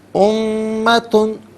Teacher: امتن میں میم مشدد ہوگا تو یہاں میم پر غنہ کیا جائے گا